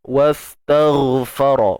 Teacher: Huruf ghain isti'la tuan-puan, angkat pangkal lidah.